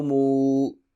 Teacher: واو مدہ ہے، ایک الف کے برابر لمبا کریں گے